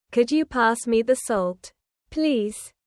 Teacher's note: Listen to the way my voice rises on, Could you? and falls gently at the end.